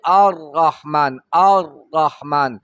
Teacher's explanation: شي بلکې توسط پیدا شي نیمه مزل پکې وشي الرحمن الرحمن په مخرج کې یو دوه پیرې رپېدل کوي خو په اواز کې ډېر مخ ښکاره کوي الرحمن الرحمن نو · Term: مشابهت تقریر